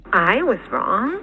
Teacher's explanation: was is not being accented in any obvious way